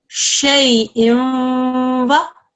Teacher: Here is a ya sakin, fatha just before. This is a ya lean, so the sound is going to be eased.